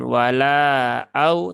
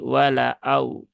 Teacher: lamnya panjang ya tetapi di sini dia ee lamnya pendek ya di sini lamnya pendek jangan dipanjangkan